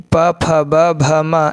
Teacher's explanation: प, फ, ब, भ, म ये सब ओठ से है